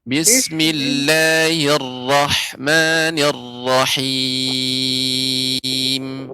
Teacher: ra ini ketika bismillahirrahmanirrahim ini tebal, Nek, dan getarannya sedikit di bagian dalam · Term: takrir